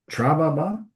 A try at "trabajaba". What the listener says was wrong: Trabajaba. Don't miss the J. We still want the J. Trabajaba.